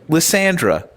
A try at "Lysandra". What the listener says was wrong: Yeah, you're saying it with an A. You're saying Lysandra. Lysay. That's how you're saying it.